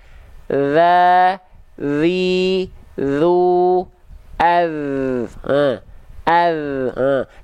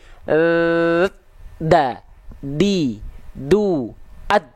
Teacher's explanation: huruf zal itu dilafalkan dengan cara menyentuhkan ujung lidah kita tipis-tipis saja ke ujung gigi seri atas.